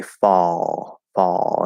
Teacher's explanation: an l sound at the end of a word like fall is going to be a half L